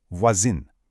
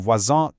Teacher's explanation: Because voisin is feminine and adds an e, that nasal sound totally disappears and becomes a hard in, voisine.